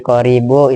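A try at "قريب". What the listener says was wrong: ma karib bukan qorib astagfirullahalazim orang pakai Kabuk. Kenapa dibacanya kop? Ayo disimak yang benar.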